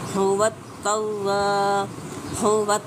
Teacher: تا کو شدت سے ادا کریں گے شد کی وجہ سے۔